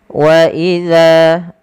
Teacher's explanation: Pada lafal bacaan wa idza laqul ladzina, di sini pada lafal huruf za kita panjangkan za-nya 2 harakat karena dia ada bacaan mad tabi'i. Kemudian hati-hati teman-teman di dalam melafalkan huruf zal karena jangan sampai kita menggantinya dengan huruf zai